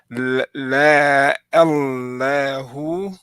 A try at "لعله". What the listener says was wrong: So I don't really feel your, I don't hear your ayn so much. La'allahu. La'allahu.